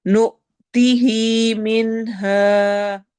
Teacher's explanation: नु हमजा पे झटका देंगे , मिनहा नून पे इजहार करते हुए हा को लंबा करना